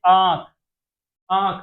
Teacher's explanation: अनुनासिक स्वर ध्वनियां होती है जिनका उच्चारण मुंह और नाक की सहायता से किया जाता है।